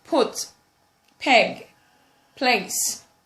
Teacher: have the bilabial plosive, which is put, peg, place.